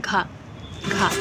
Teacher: इसके बाद है कि घा उच्चारण स्थान कौन सा है, घा, तो घा कहाँ से आवाज़ निकल रही है, आपके कंठ से